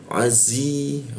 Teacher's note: huruf zi tebal ya. Hembusannya itu kuat. Ee gigi bertemu gigi dirapatkan. Lalu posisi lidah itu di belakang gigi azi. Bertemu ya lagi dimatikan maka tambah kuat dia penekanannya.